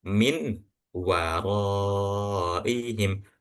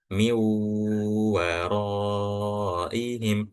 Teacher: Akan tetapi setelah huruf nun sukun ini itu bertemu dengan huruf waw, yang mana huruf waw adalah idgham bi gunnah. Jadi setelah kita melafalkan huruf mim, miu itu langsung masuk ke huruf waw dan bacanya pun dengan gunnah atau ditahan dulu.